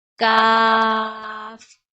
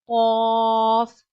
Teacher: We read cough by using the root of our tongue and soft part of our pallet.